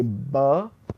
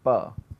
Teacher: Okay, there is a difference between the time that the vocal cords will start vibrating. For the b sound, the vocal cords begin vibrating while your lips are closed. They already start vibrating, so the vibration is already building up. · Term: voice onset time